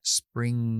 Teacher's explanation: La G, voy a hacer la G que es oclusiva y antes de hacer la explosión para hacer G, me dejo la lengua en zona de G y hago un sonido por la nariz